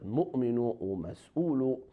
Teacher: that waw is silent, and instead of waw we pronounce hamza